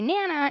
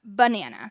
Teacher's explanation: leaving out the weak syllable of a word.